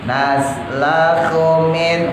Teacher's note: hu-nya pendek, jangan dipanjangin. Jangan naslahu, jangan pendek.